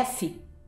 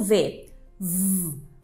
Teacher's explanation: quando a gente faz o f e o v a gente faz né O mesmo Ponto articulatório só que o que muda é uma consoante vibrar as cordas